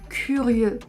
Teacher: Parfois, on a aussi les lettres E et U qui font le son E, beaucoup plus fermé, comme dans curieux par exemple.